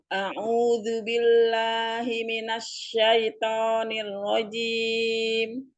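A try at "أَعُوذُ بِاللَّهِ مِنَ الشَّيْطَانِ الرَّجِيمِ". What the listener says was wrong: B-nya dijelaskan. A'udzubi. Billah.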